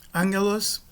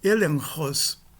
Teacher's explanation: O gama é uma nasal gutural, que precede uma gutural oclusiva, que é o ri.